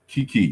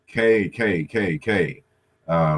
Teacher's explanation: They all have in common these velar sounds.